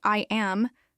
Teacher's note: When you say I am, there's a slight pause between the two words that creates a formal choppy rhythm.